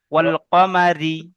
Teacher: জি, রয়ের নিচে জের আছে, জের থাকলে রকে বারিক করে পড়তে হবে